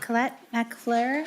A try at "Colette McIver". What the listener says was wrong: It's Colette McIver. Looks like an L.